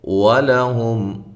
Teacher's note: واو کو ہونٹوں کو گول کرتے ہوئے لام کو باریک، ہم میم ساکن کا اظہار ہے۔